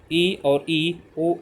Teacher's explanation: इनमें ज़्यादा मुख यानी कि ओंठ ज़्यादा पूरा नहीं खुलता है, ओंठों के बीच में ज़्यादा दूरी नहीं होती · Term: संवृंत